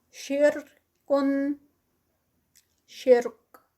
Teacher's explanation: شرکن، شرک، اور کاف پہ اینڈ پہ ہمز. را جو ہے وہ لائٹ ہوگی کیونکہ را سے پہلے کسرہ آ رہی ہے